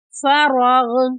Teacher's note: یہاں پر را کو موٹا پڑھیں گے اور غین کو بھی موٹا پڑھیں گے۔